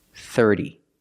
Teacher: The T makes a fast D sound. 30. Put the stress on the first syllable.